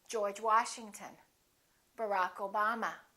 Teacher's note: when we stress the names of people we stress the last name the second word